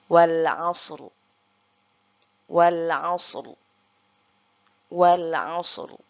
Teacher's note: huruf ro-nya kita baca tafkhim ya, atau tebal, karena sebelum huruf ro yaitu ada huruf isti'la yang berharokat sukun, lalu sebelumnya juga ada huruf yang berharokat fathah.